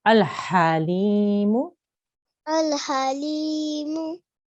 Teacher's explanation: Now remember, this ha comes from the middle of our throat. So it's you have to feel the sound, the air coming from your throat there.